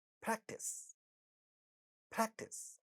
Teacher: Second syllable has ta sounds in the initial position, but not the stressed syllable, therefore no aspiration.